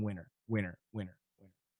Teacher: In that case, it's all vibrated. There's no aspiration in winter, winter, winter, winter, if we say it fast.